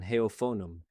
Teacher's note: Heophonum uses that fricative allophone rule from slide 8. The F sits between two vowels, so it's voiced, pronounced like a V